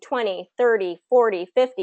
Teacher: want to stress or emphasize the new information okay so 2020 we're emphasizing the first syllable there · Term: first syllable stress